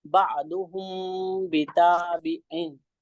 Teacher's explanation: साकिन के बाद बा आ रहा है तो इसमें इख्फा शफवी होगा। तो इसमें गुन्ना और इख्फा के साथ इसको पढ़ेंगे